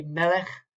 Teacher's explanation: The Kaf is also a little bit more of a Chet type of sound without the dagesh.